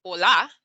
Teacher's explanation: accent falls elsewhere as we saw in hola you recognize that the emphasis isn't on the o it's on the la